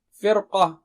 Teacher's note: قاف جو ہے نا موٹا اونچا ہے تو اس کی تیاری میں را کو موٹا کر دیتے ہیں آسانی کے لیے، فرقہ بولنے کے بجائے فرقہ، را کو موٹا کر دیں۔